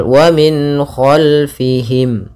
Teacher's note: izhar halqi karena suara nunnya dibaca jelas dan datang setelahnya huruf-huruf halq